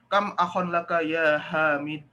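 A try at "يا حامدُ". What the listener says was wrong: Dia dibaca harokatnya, jangan disukun.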